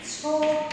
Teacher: কথ্য ভাষায় দুই অক্ষরের বিশেষণ পদের শেষে অধ্বনি ও ধ্বনিতে পরিণত হয়। আবারও বলি, কথ্য ভাষায় দুই অক্ষরের যে বিশেষণ পদ রয়েছে সেখানে বিশেষণ পদটার শেষে যে অধ্বনি সেটা ও ধ্বনিতে পরিণত হয়।